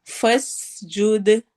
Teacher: فس سین میں سیٹی والی آواز ہے